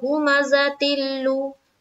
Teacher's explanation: इदगाम ताम यानी कि इदगाम बिला गुन्ना, बगैर गुन्ना के साथ हम यहाँ पर इदगाम करेंगे। तो यहाँ पर बोलेंगे इदगाम ताम होगा, इसलिए कि 2 जेर की तनवीन के बाद हुरूफ यरमलून के 4 हर्फ में से लाम आई।